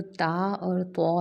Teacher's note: ہے کہ جو تا اور تو ہے نا، تا اور تو، تا کو باریک کر کے پڑھتے ہیں جبکہ تو کو موٹا کر کے پڑھا جاتا ہے